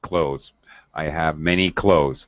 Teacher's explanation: It is perfectly acceptable to say clothes, leave out the TH sound entirely, and say close with the Z sound exactly the same, a homonym of close the door.